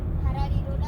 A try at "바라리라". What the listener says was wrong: 로가 아니야. 바라리라 바라리라